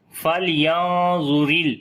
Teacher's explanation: بسم اللہ الرحمن الرحیم فَلْيَنظُرِ الْإِنسَانُ إِلَى طَعَامِهِ فَلْيَنظُرِ لام کے اوپر صفت توسط کریں گے، آواز کو ہلکا سا کنٹینیو کریں گے، نون کے اوپر جو ہے وہ اخفا کریں گے، نون ساکن کے بعد ضا ہے جو کہ حروف اخفا میں سے ہے، تو ضا کیونکہ موٹا ہے اور نون ساکن کے بعد ہے اس وجہ سے جو اخفا ہوگا وہ بھی موٹا ہوگا